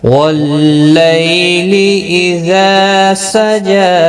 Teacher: والضحیٰ واللیل اذا سجا، واللیل یالین ہے، تھوڑا نرمی کے ساتھ کھینچ کر ادا کریں گے۔ اذا الف مدہ ہے اور جیم کے اوپر کھڑی زبر ہے، ایک ایک الف کی مقدار کے برابر کھینچ کر پڑھیں گے۔ یہاں پر وقف کی صورت میں بھی ایک الف کی مقدار کے برابر کھینچ کر پڑھیں گے۔